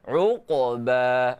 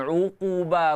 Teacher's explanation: Qaf, qalqalah surah, bunyi dia qa.